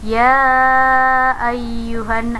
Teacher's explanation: hukum bacaan Mad Jaiz munfasil nah dibacanya panjang panjangnya 5-6 harokat